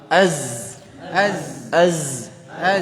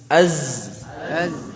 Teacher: makhrajnya huruf za, ujung lidah bertemu dengan dinding gigi seri bawah